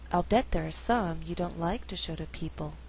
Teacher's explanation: I could choose to stress in the second half of the sentence only like and people